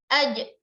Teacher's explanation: aj memantul suara pada tengah lidah kita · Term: qalqalah